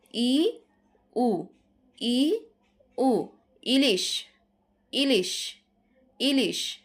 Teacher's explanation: আবার সংবৃতের বেলায় দেখো, ই, হ্রস্ব উ, ই, উ, আমাদের মুখটা খুব বেশি একটা খুলতে হচ্ছে না